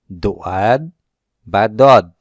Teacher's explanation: জিহ্বার গোড়ার দিকের পার্শ্ব উপরের দাঁতের সাথে মিশিয়ে উচ্চারণ হয় দোয়াদ বা দদ